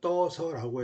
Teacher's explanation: 뜨다에 어서가 오면 떠서라고 해서 어간에 있던 의가 탈락합니다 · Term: 의 탈락